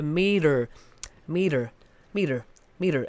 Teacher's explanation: the t becomes a d